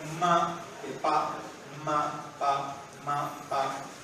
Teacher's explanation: ma va a tener una vibración nasal que pa no tiene, y eso lo capta el cerebro.